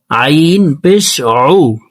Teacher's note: আইন হরফকে হলকের মধ্যখান থেকে উচ্চারণ করব, আইনের মখরাজ হলকের মধ্যখান থেকে হবে।